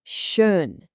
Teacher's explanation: shape your lips like you're about to say O. Go on, try it. Now hold that exact shape, but instead of saying O, try to say the sound E.